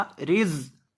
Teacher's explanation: یہ جو زا ہے اس میں آپ نے سٹی پیدا کر کے پڑھنا ہے. را زیر زا رز.